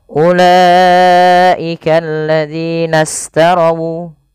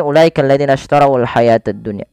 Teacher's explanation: Sehingga langsung ke shin yang dia disukunkan. Nah, hati-hati teman-teman di dalam melafalkan huruf shin, jangan kita rubah menjadi sin ya. Sering terjadi mungkin ya membaca huruf sin diganti dengan huruf shin diganti dengan huruf sin, misalnya ulaika alladzina istarawu.